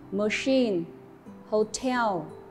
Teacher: danh từ có trọng âm được nhấn vào âm tiết thứ hai